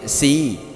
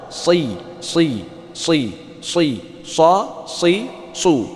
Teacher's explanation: Jadi bedakan antara sin dan sad. Jadi ada bacaan sin, kalau sin si, kalau sad si, sa si su. Tebal ya.